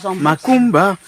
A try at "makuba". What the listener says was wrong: C'est pas makumba, mais makuba.